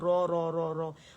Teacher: را ہیوی ہوگا کیونکہ فتح کے ساتھ ہے